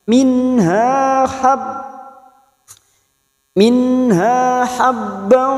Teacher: hanya kita panjangkan dua harakat fathah diikuti Alif